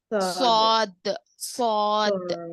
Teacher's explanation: سواد ہاں زبان کی نوک سے جب اوپر نیچے کے اگلے دونوں دانت. زبان کی نوک جو ہے نا نیچے کے دانتوں کے اندر لگنا، زبان کا درمیانی حصہ اوپر تالو کو لگنا